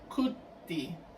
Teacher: Por un proceso de umlaut, la O se va a elevar por influencia de la I y se va a pronunciar como cuti.